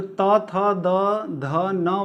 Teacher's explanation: okay friends, अब देखिए जो त थ द ध न वाला पंक्ति है उसको हम दंत्य बोलते हैं, क्योंकि ये जो है दांत के द्वारा बोला जाता है इसलिए हम दंत्य कहते हैं